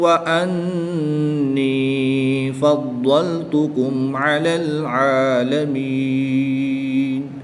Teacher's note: نون مشدد میں غنہ کر کے پڑھیں گے، ضاد کو پر یعنی موٹا پڑھیں گے۔